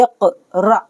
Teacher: حمزہ ساکین کے پڑھنے میں جھٹکا ہوتا ہے